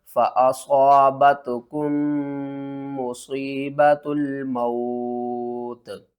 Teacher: اس کاف کو میم سے ملائیں گے اور میم کے اوپر غنہ بھی کریں گے۔